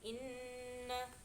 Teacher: Dan bacaan di awal itu ada gunah karena ada nun bertasjid, jadi bacanya itu mendengung